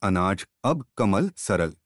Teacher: यह अर्धविवृत मध्य स्वर है। इसके उच्चारण में जीभ का मध्य भाग कुछ ऊपर उठता है और होंठ कुछ खुल जाते हैं।